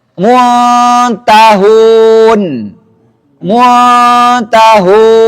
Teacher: Ikhfa'nya ujung lidahnya masih kondisi bersiap-siap. Nanti ketika disebutkan huruf ta-nya baru dia menyentuh.